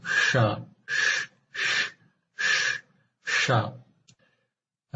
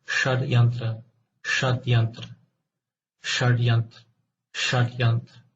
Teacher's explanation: the tongue is curled upwards, and its tip touches the roof of the mouth between the alveolar ridge and soft palate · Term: voiced retroflex fricative